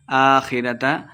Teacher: آخرت کھڑی زبر ہے تو دو حرکات لمبا کر کے پڑھیں گے. خو کو موٹا پڑھنا ہے.